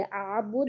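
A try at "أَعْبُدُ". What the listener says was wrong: लेकिन आपकी तो बा गोल नहीं है पेश, प्रॉब्लम दाल पे नहीं है, प्रॉब्लम बा पे है। बुध, बू बुध बुध बुध बुध बुध ठीक है, नहीं आप खींचते नहीं है। आपकी पेश कैसी होनी चाहिए मुझे बताए। ऊ ऊ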